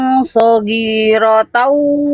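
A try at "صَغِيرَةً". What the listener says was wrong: Oke, huruf ghoin jangan dibaca kayak huruf G, Bunda. Sogi, ghoin itu kan sifatnya mengalir suara. Jadi jangan gi tapi ri, sorry, sorry. Fokus di huruf ghoinnya, dialirkan suaranya. Soghiratan. Jadi bukan G. Ya bukan gi tapi ri. Soghiratan.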